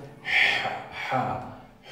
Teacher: Es como si pronunciaran una J, pero atrás, en la garganta. Vayan diciendo Juan, Juan, Juan, y vayan haciendo más atrás, ja, ja, Juan, por ejemplo.